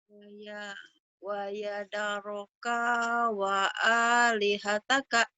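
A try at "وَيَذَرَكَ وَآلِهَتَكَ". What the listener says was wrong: Udah pandai tapi kaknya pendek. Jadi dari kak segera ke wow ya. Kawa. Segera ke wow. Kaknya pendek.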